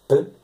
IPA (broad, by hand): p